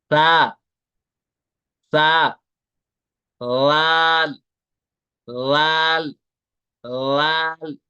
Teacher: इनको सिटी के साथ नहीं पढ़ना है इनको बिल्कुल विदाउट विसल पढ़ना है ससल साउंड के साथ नहीं पढ़ना